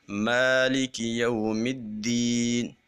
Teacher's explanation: جب ہم نے یا کو ادا کرنا ہے تو آواز ناک میں نہیں جانی چاہیے